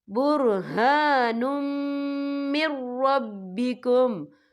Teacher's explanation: میم جو ہے حروف یرملون میں سے ہے، تو یہاں پر ادغام ہوگا، تو ہم اسے غننے کے ساتھ پڑھیں گے